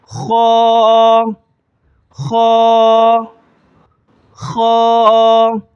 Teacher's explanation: اس کو خے نہیں پڑھیں گے بلکہ موٹا کر کے پڑھیں گے، خا، ٹھیک ہے۔